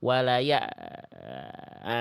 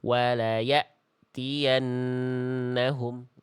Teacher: Huruf hamzah sukun jangan sampai bersisa bunyinya. Betul-betul putus Bunda.